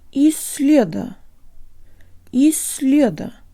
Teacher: taking care to double the length of the S